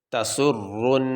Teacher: یہ جو آواز ہے نا رن، یہ ہم ناک میں غنہ کر رہے ہیں، غنہ کہتے ہیں ناک میں تھوڑی دیر آواز کو ٹھہرانے کو۔